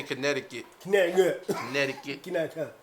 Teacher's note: People from New Britain don't pronounce T's.